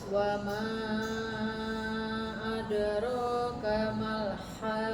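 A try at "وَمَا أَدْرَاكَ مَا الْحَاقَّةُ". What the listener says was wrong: Lam sukunnya kurang. Malha. Kurang lama dikit. Malha.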